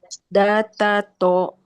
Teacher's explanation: ujung lisan bertemu Pangkal gigi seri atas